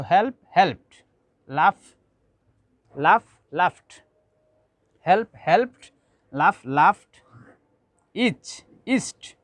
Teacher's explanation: if we add ed ending, in this case we have to pronounce this ed ending like ta sound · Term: unvoiced sound